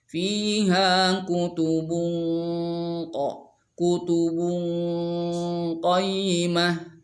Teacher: karena qaf itu isti'la juga, maka dengungannya harus tebal · Tanwin dhammah bertemu dengan qaf, maka itu ikhfa.